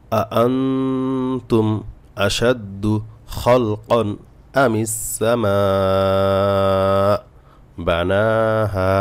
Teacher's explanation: নুন সাকিনের পরে তা আসছে, ইকফা গুন্না। তা হলো ইকফার 15টি হরফের একটি অক্ষর, এই জন্য এখানে গুন্না হয়েছে।